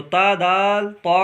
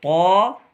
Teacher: تا دال باریک ادا ہوگا، باریک یعنی پتلا، موٹا پر یعنی موٹا کر کے پڑھیں گے طا کو۔